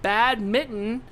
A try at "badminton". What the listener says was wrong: Do you see there's an N in there? That's not a misspelling. It's not badminton. It's not a badminton.